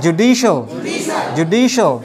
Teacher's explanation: so this stress is on the second syllable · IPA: /dʒu ˈdi ʃəl/